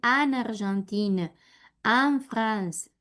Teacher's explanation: No puedo pronunciar em ni en, tiene que sonar an. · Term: A nasal